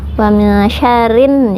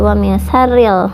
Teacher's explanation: ada alif lam samsiyah atau alif lam yang tidak dapat dibaca, jadi langsung ke nun. Wa min syarrin ya, tidak wa min syarril ya karena alif lamnya tidak dapat dibaca.